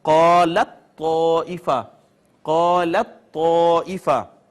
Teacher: اور اگر آپ غور فرمائیں پہلا حرف ساکن ہے دوسرا متحرک ہے، قاعدہ یہ ہے کہ ساکن کو متحرک میں ضم کر دیں، یہ شد آ گئی. اب تا کو طا میں ضم کر دیا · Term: ادغام متجانسین